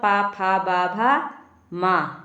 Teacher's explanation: पावर्ग, पावर्ग का मतलब पा फा बा भा मा, इन सब का उच्चारण स्थान क्या होता है, ओष्ठ।